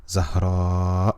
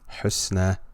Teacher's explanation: this alif has been extended and those of you who are familiar with tajweed are aware that this is known as mad wajib